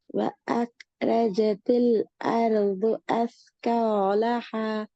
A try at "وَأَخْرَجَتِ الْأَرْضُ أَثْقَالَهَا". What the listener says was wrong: அருது, அத கொஞ்சம் மாத்துங்க ஆகும். அர்து, அர்து. அருது அல்ல, அர்து. وأخرجت الأرض أثقالها. அர்து, அர்து, அர்து.